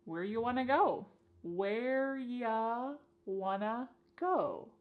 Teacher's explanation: You becomes ya, and want to becomes wanna. Where ya wanna go? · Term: reduction